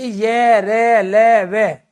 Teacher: तो यहां आपको ध्यान रखना है टोटल 52 वर्णों में से आपके 31 वर्ण जो है वो घोष है जिनमें वाइब्रेशन होता है जिनमें कंपन होते हैं। जब आप उच्चारण करोगे जैसे य का उच्चारण कर रहे हो आप तो य को आप लंबा खींच रहे हो।